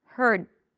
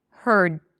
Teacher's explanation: I still activate the vocal cords but just slightly because I don't say heard. I don't release the d